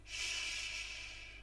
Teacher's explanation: Sh is the unvoiced post-alveolar fricative.